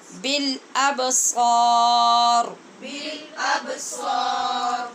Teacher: را کو بھی پر کریں گے